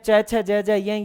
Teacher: जो तालु से उच्चारित होते हैं च छ ज य ये तालव्य वर्ण है।